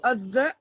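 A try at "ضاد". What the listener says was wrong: Alors, il faut allonger et gonfler plus. Ça fait Adda, Adda.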